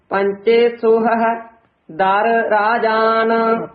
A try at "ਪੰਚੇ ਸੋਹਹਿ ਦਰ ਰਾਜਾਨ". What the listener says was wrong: ਇੱਥੇ ਵਿਸਰਾਮ ਦਰ ਰਾਜਾਨ ਨਹੀਂ ਕਹਿ ਦੇਣਾ ਦਰ ਵੱਖਰਾ ਬੋਲਣਾ ਹੈ ਰਾਜਾਨ ਇਕੱਠਾ ਕਹਿਣਾ ਹੈ